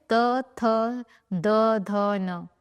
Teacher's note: ऐसा एक बार भी नहीं हुआ कि आपकी जिब आपके दांतों से ना टकराई हो, इसीलिए इन्हें दंतव्य व्यंजन कहा जाता है या दंतव्य वर्ण।